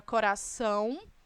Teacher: quando você pronuncia a palavra coração percebam que esse o e tem som de u portanto também semivogal